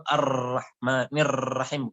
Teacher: terlalu banyak tikrarnya, atau tikrar itu artinya berulang-ulang ra-nya. Sehingga supaya jangan kita bacanya pakai kayak gitu tuh, Ar-Rahmanir Rahim, bukan kayak gitu.